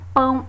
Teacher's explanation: Pão, apesar de terminar com O, é pronunciado como se fosse um U. Então, é considerado uma semivogal.